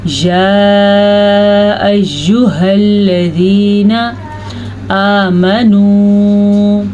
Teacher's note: اچھا جی، یا اس پہ مد ہے. اس مد کی مقدار 3 حرکات عربیہ کے برابر ہے، تو اسے ہم 2 سے 3 سیکنڈ کی لمبا کریں گے